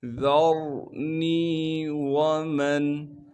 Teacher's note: میم کو نون ساکن سے ملائیں گے بغیر غننے کے۔ ذرنی ومن خلقت، خا کو موٹا کر کے پڑھیں گے کیونکہ خا موٹے حروف میں سے ہے، لام کو قاف سے ملائیں گے کیونکہ قاف ساکن ہے اور قاف پر قلقلہ کریں گے اور قاف کو موٹا کر کے پڑھیں گے، تا کو باریک کر کے پڑھنا ہے۔ · ذَرْنِي وَمَنْ، ذا کو باریک کر کے پڑھیں گے، ذا کو آگے را ساکن سے ملا دیں گے، را ساکن سے پہلے زبر ہونے کی وجہ سے را کو موٹا کر کے پڑھیں گے